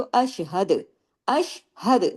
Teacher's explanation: अगर रोकेंगे तो अशहद अशहद दाल पे फिर कलकला करेंगे क्योंकि हम दाल को के पेश को रोक देंगे और अगर मिलाएंगे तो कुल अशहदु फिर कलकला नहीं होगा।